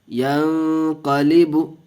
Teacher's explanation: ہم نے یہاں گنہ کر کے پڑھا اس لیے کہ اخفاء کا قاعدہ ہے۔